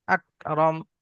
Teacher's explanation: জি, এটা ছোট কাফ, গলা থেকে উচ্চারণ হবে না। আকরাম, হালকা করে।